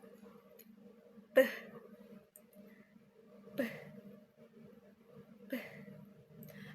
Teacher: Cara pembentukannya dengan merapatkan bibir lalu udara dilepaskan secara tiba-tiba. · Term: fonem P